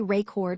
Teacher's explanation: When we say rayord with the stress on the second syllable, it's a verb meaning to capture or store information